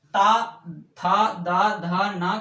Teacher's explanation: इसके बाद तावर का उच्चारण दंत से होता है, यानी जब ता था दा धा ना का उच्चारण हम करते हैं तो हमारी जिह्वा दांत से स्पर्श करती है, इसलिए दंत व्यंजन कहे जाते हैं ये।